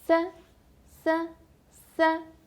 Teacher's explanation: Il est aussi au premier ton. On garde son ton plat et haut. 5, 5, 5. 4, on prononce 6 en chinois.